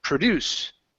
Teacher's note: so if it's the verb the stress is at the End